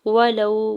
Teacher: واو ساکن سے پہلے لام کے اوپر زبر ہے، واو لین ہو رہا ہے